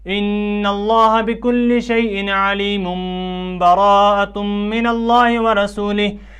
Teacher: تو ہم نے اس قاعدے کے تحت، جو قلب کا قاعدہ ہے، اس قاعدے کے تحت ہم نے تنوین کو میم سے بدل کر غنہ کیا اور اس کو ہم نے غنہ کے ساتھ علیم سے علیم پڑھا۔